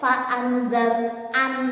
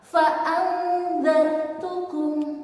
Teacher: Lalu jika nun sukun bertemu dengan za, fa'andzartukum, fa'andzartukum, tidak boleh fa'andzar-an, nunnya tidak boleh dibaca dengan jelas, samar-samar.